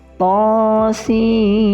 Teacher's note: Jadi nun langsung berganti menjadi huruf mim dilebur bukan lagi sin tapi sim th sim mim dilebur dan didengukan kemudian masuk ke mim enam harakat. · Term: idgam bigunnaah